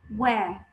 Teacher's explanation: في البريتش وير مفيش ار